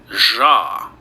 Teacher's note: this Z with a tail on it, that is known as a voiced retroflex fricative